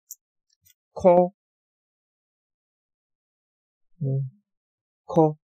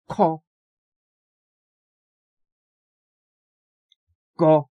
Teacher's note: 혀를 밑에, 혀의 안쪽 부분을 들어 올려가지고 물렁 입천장에 닿게 합니다